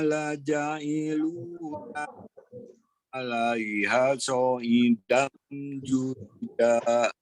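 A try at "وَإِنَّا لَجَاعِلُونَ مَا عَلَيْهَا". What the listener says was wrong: Oke, ada bacaan panjang yang kurang dibaca 2 harokat ya. Wa inna sama alaiha. Wa inna la ja'iluna ma alaiha.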